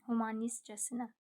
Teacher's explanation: Humanistcəsinə burda sadəcə t düşür